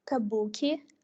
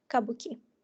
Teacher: in the first variant we can observe the consolidation of the main stress on the second syllable and the reduction of the unstressed vowel